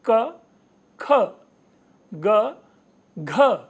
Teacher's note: जो दूसरा और चौथा वर्ण है ये दोनों पहले और तीसरे वर्ण की अपेक्षा ज्यादा भारी लग रहा है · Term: महाप्राण